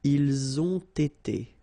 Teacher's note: Ils ont été, so same thing here. You get first the liaison z, and then you get the t, okay? Ils ont été, all right?